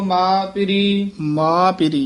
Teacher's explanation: ਇਸਨੂੰ ਮਾ ਨਾਸਕੀ ਨਹੀਂ ਬੋਲਣਾ